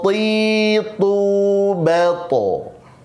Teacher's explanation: Makhrajnya hanya ujung lidah. Jangan sampai ke makhraj hamzah. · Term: huruf to